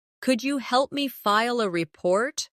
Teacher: Could you becomes could ya in natural speech.